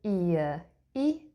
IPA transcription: ɪə